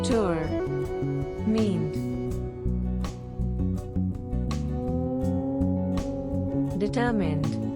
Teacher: 3 syllables, and the emphasis on second syllable.